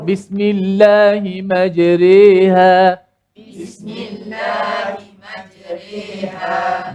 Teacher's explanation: Imalah ni maksud dia baca dengan mencondongkan bunyi je. Condong bunyi.